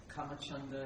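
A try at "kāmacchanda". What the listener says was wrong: It's actually kamachanda. The A with the bar over it it's a long vowel. Kamachanda.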